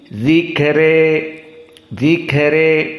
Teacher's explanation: karena dzikra di sini dalam keadaan al-imalah al-kubra, maka dihapus dari al-imalahnya.